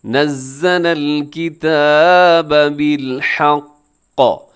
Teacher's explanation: زا کے اندر سیٹی ہوتی ہے